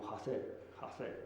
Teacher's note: El canario no dice precisamente hacer, sino que existe una aspiración como hacer, ¿no? Existe una aspiración velar.